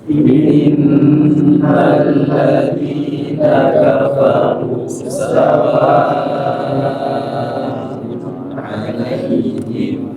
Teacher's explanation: Kafaru rendah. Sawa'un 'alaihim ini adalah penegasan. Kalau penegasan berarti dibaca tinggi nada ya.